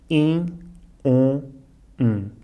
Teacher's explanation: As palavras que acabam em IM, OM e UM são um pouco mais fáceis porque correspondem ao som dessa vogal, I, O, U, mas nasalado, in, on, Para fazer este som, basta dizer o som da vogal seguido de um N, in, on, un, mas o N é incompleto, não chegamos a tocar com a língua no céu da boca.